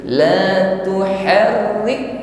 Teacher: Selanjutnya, tekan huruf kaf yang memiliki sukun, la tuharrik, sehingga kualitas huruf kaf muncul di sini sebagai hams, la tuharrik, rik ditekan lalu ada hembusan napas yang dilepaskan di sana.